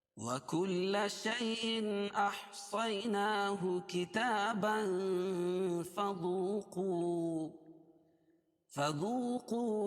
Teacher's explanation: احصیناہ کتابا، اور اگر کتاباً کو فذوقوا کے ساتھ ملا کے پڑھیں گے تو یہاں اخفاء حقیقی ہو جائے گا، کیونکہ تنوین کے بعد حروف اخفاء کے 15 حرفوں میں سے فا آ جائے گی، تو اس کو ناک میں آواز کو چھپا کے پڑھیں گے.